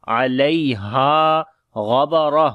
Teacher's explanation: Ghain and ra we read in heavy sound, and this ta we convert into ha, so we make ha with hams quality, as we say ghabara.